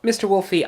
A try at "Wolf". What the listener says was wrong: Wolf! The E is silent, remember?